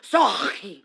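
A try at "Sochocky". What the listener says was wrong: So cocky. The H is silent.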